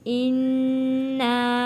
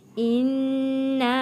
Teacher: نون تشدید پہ غنہ ادا کیا ہے اور مد بھی ہے